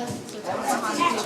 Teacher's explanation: Tip of the tongue behind two front teeth. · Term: ta